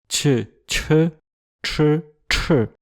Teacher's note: les 2 premières sont des affriquées alvéolo-palatales et les 2 dernières des rétroflexes et qu'en plus 2 de ces consonnes sont aspirées. Donc ça donne respectivement tch, tch, tch, tch.